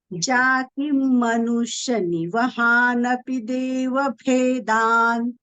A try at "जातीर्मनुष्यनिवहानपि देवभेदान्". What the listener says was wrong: Jati dirgham, Bhagini. You missed that dirgham. Jatir manushya. Yes, Bhagini. Jatir manushya. There is dirgham and half ra. Dirgha and half ra. Jatir manushya.